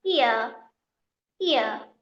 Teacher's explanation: അവസാനം വരുന്ന ആറ് പ്രൊനൗൺസ് ചെയ്യൂല